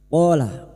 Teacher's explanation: fathah digudi alif 2 harokat mat tabi'i. Qala ma fathah digudi alif masing-masing 2 harokat kita panjangkan mat tabi'i.